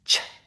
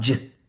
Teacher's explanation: Your vocal cords did not vibrate. Now I want you to say ch but turn on your voice box. It becomes j. · Turn off your voice box. Ch, ch, ch. Turn it on. J, j, j.